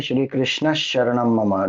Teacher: that Visarga becomes one more Sha